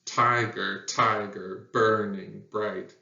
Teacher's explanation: the emphasis starts on the very first syllable and then it alternates · the first syllable is stressed the second syllable is unstressed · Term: trochi